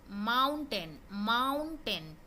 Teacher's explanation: माउंट मतलब ऊपर चढ़ रहा है, फिर टेन बोल रहे हैं तो थोड़ा नीचे आ रहा है ना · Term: रिदम